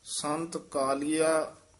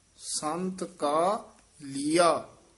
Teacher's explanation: ਸੰਤ ਕਾ ਇੱਥੇ ਠਮਕ ਲਾ ਦੇਣੀ ਹੈ ਫਿਰ ਬੋਲਣਾ ਲੀਆ